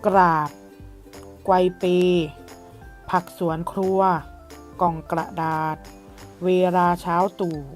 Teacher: ออกเสียงพยัญชนะต้นพร้อมกันนะคะจึงจัดเป็นคำที่มีพยัญชนะควบกล้ำ